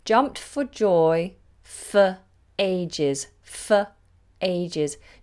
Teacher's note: notice how this version of the word for is pronounced with the schwa